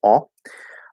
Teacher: the aw sound the backward c with a little bit of a lip lip motion to it